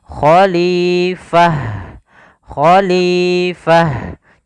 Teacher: seperti ini tapi ketika dia kita diwakafkan ketika wakaf pada huruf Ta ini maka t-nya berubah menjadi ha yang dimatikan